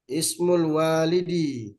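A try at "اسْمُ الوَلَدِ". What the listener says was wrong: Eh, kalau walid itu ada alif di depan wawunya. walid itu ada alif di depan waw. ini enggak ada alif di depan waw, jadi bacanya Walad, waladi, lamnya di fathah.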